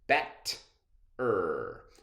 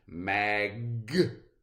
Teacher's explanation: If you try to get bet-er to stretch, you're really not going to have much success because the T ends that syllable. It's really hard to stretch out a T or a G sound. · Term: closed syllables